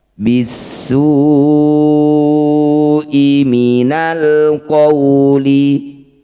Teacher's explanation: Mad tabi'i bertemu dengan hamzah di satu kata disebut bacaan mad wajib muttasil. Cara bacanya su yang bertanda layar, panjangkan 6 harokat.